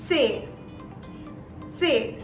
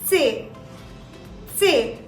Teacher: there is a slight short t in the beginning of the pronunciation which is very essential to sound more german